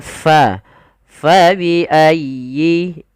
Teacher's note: Jangan fa biayyi tapi fa dialirkan nafasnya. Karena huruf fa memiliki salah satu sifat yaitu sifat hames. Artinya mengalirnya nafas kita.